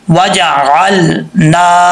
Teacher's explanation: نون کے آگے ایک الف کی مقدار لمبا کریں گے